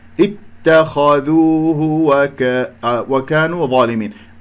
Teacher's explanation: الضاء مفخم مرتبة أولى لأنها مفتوحة بعدها ألف